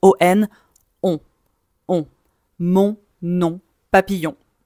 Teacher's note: Je veux entendre on prononce pas le N. O + N forme un son. C'est la voyelle nasale. · On voyelle nasal parce que le son passe par le nez et donc on ne veut pas prononcer le n.